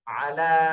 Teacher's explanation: আইন জবর আ, লাম খাড়া জবর লা, আলা। লামে তিন আলিফ টান দিতে হবে,